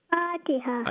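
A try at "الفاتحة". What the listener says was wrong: Yeah, not Fatiha, because after the Fa there's Alif Madda, so the Fa is going to be dry, couple of counts. Madda Asli Tabi'i. Fatiha.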